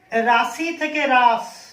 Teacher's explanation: দেখো রাশি শব্দটায় এই যে হস্যইকার শেষে আছে, অন্তে আছে, এই অন্তে থাকা হস্যইকার উঠে গেল, লোপ পেল, তা হয়ে গেল রাস। দেখো অন্তে কোনো হস্যইকার নেই। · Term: অন্ত স্বরলোপ